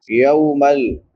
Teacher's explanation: یا کے بعد واو لین ہے، واو ساکن ما قبل فتحہ یعنی زبر ہے، تو اس کو نرمی سے پڑھیں گے